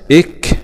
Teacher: الذين إذا همزة وصل وسط الكلام لا تنطق ويبدأ بها بالكسر كاف سكون مع الهمس